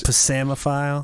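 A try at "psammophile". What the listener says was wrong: the P is silent. It's actually PSAMMO PHILE.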